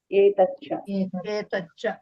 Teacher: ఇక్కడ మహాప్రాణం లేదు కాబట్టి మామూలు చాలే వస్తాయి